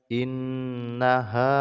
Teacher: dengung ya karena Nun yang bertasdid · In dengung ya karena nun yang bertasydid, kemudian mim sukun bertemu dengan mim, maka hukumnya ini adalah idgham mimi ya. Jadi mengidghamkan, masukkan bunyi mim ke dalam huruf mim.